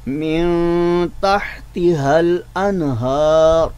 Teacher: लफ्ज़ मेन के जो नून साकिन है उस पर हमने इख़फ़ा किया, यानी उसको गुन्ना के साथ पढ़ा है।